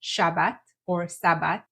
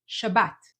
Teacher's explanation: your s into an sh sound not Sabbat but Shabbat and you need to shift the syllable stressing from the beginning Shabbat or Sabbat to the end Shabbat